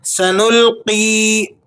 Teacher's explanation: سین سیٹی والا حرف ہے، اس لیے باریک پڑھا جائے گا سیٹی کے ساتھ۔ سنلقی قاف یا زیر قی، تو یہ یا مدہ ہے، آپ اسے 1-2 سیکنڈ کھینچ کر پڑھیں گے۔